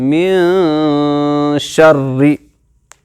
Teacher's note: اخفا کے ساتھ، ناک میں آواز چھپانے کے ساتھ پڑھنا ہے